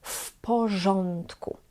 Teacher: w porządku wymawiamy też jak jedno słowo i też wymawiamy jak f